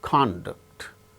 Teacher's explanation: stressed when they are used as verbs for instance conduct conduct the first syllable gains stress when it is used as noun